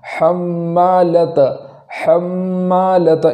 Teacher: آگے ہے حمّا، حمّا کے حمّالۃ کے اندر میم پر تشدید ہے، تو میم پر جب تشدید ہو تو وہاں ایک الف کے برابر گنہ کرنا ضروری ہے